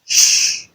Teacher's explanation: We have the voiceless palatoalveolar fricative, sh